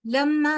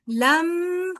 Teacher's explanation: मीम पे वो मीम मुशद्द है। यहां पर गुना करेंगे।